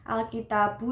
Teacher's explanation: Terdapat hukum bacaan Alkitabu yaitu idhar qamariyah. Cara membacanya harus jelas karena lam matinya tidak boleh dimasukkan.